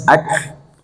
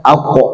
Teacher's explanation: kaf itu harusnya sifatnya hemes ak tetapi di situ baca aq.